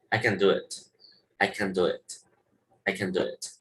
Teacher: Y nada más vas a escuchar que dicen, I can do it, I can do it, I can do it. Nada más pronuncian hasta la N